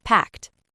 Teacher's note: This word is very important for pronunciation because it ends with a clear t sound.